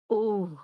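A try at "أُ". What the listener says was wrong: Nah, yang uh-nya kurang.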